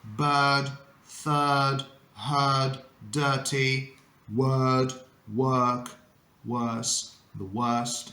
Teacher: In British English, in these words specifically, we use a sound called schwa.